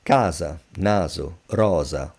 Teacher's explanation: the voiced version of the letter S which is Z to make a point when the sound is without voice is see it's the same your mouth is engaged in the same way one is without voice one is with voice.